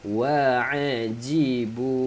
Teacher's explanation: bu panjang 45 harakat sebab tanda ombak bertemu dengan hamzah 45 harakat.